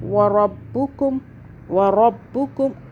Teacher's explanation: را کے اوپر دونوں پہ زبر ہے، موٹا پڑھنا ہے را کو